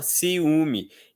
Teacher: Todas são vogais. Então, nós temos 3 sílabas diferentes, uma para cada vogal que existe nessa palavra